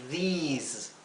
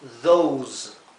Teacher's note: esta vocal, la O o la E, la que precede a la S, se pronuncia larga.